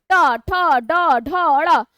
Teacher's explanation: जिह्वा पलट कर जाएगा और तालु के पिछले भाग को स्पर्श करेगा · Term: मूर्धन्य